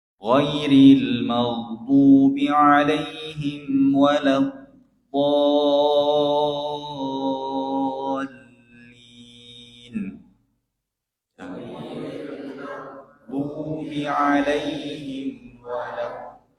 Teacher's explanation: pada lafaz yang terakhir, ayat yang terakhir, do-nya harus panjang. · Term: mad lazim hilmi musaqqal